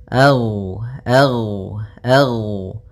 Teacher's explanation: sifat rakhawah yang di mana suaranya mengalir